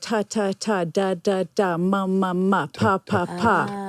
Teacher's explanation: you actually stop the flow of air in your mouth when you make them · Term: plosives